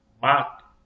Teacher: O A aqui, ó, ma, sai diretamente pela boca. Se você trancar o seu nariz e falar mato, mato, faz diferença nenhuma. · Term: oral